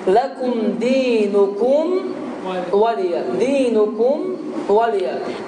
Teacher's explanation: Mimi tələffüz edib və ağzı təzdən açmadan, yəni dodaqları tərpətmədən ondan sonra vavı əda etməkdir.